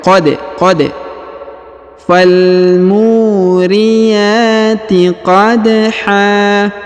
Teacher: Huruf da berharokat sukun, maka kita baca pantul ya, atau kita qalqalahkan.